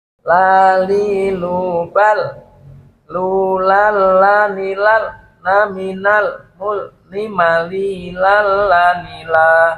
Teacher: sisi lidah bagian depan mengenai sisi gusi gigi seri pertama yang atas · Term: huruf lam